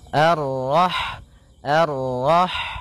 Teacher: Rah di sini ada huruf ha ha yang berharakat Sukun dan sifat ha itu yang paling mencolok adalah sifat hamasnya yaitu mengalir nafas ketika kita membacanya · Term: sifat hamsnya